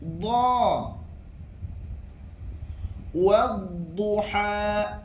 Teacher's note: Bila kita kata huruf dad saja, tepi lidah membetuli gigi geraham atas. Tepi lidah menempel ataupun melekat pada gigi geraham atas. Sama ada sebelah kanan ataupun sebelah kiri.